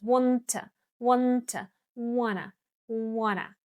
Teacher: native speakers, link these two words, wanna, and then when you say it faster, this t actually disappears.